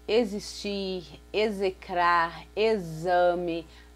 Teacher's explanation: quando você pronuncia exame, o som forte aí é de Z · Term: som de Z